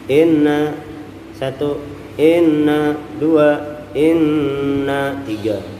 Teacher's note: Nun tasydid kita tahan sampai 3 harokat